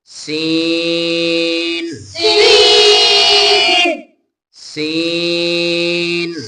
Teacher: زا زا زا. زا اب سین کو لمبا کر کے پڑھنا ہے. اس میں سیٹی کی آواز آنی چاہیے